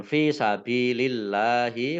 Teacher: Kemudian fi sabilillahi fa kasroh ya sukun mat tabi'i, ba kasroh ya sukun juga mat tabi'i panjang 2 harokat. Allahnya dibaca tipis karena harokat di depannya kasroh.